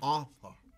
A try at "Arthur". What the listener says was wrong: Did you just leave the last R off? Are you rearranging these letters? Author. You got to put that U in there. Author. Arthur.